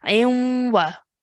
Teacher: the ayn joins on to the waw mushaddad, so we're going to make a nasal sound in between